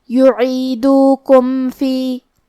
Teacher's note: کلمت یعیدوکم میں آخری میں میم ساکن ہے، پھر حرف الفا ہے، فا حروف الاظہار الشفوی میں سے ہے، تو ہم میم کو ظاہر کریں گے اور بغیر غنہ سے یہ حکم کو ادا کریں گے۔